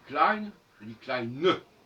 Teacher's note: Dans le deuxième cas de figure, le N de Klein s'entend.